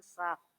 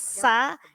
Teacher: Sya-nya tebal. Jadi yang pertama tipis, sa, yang kedua sya.